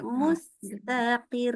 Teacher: mustaqir itu jelas qafnya tidak panjang, qinya pendek ya.